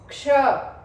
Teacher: जैसे आप क्ष बोलोगे तो एक साउंड नहीं है, आप ध्यान से सुनोगे क्ष तो आपको दो साउंड सुनाई देंगे, एक क का साउंड और एक श का साउंड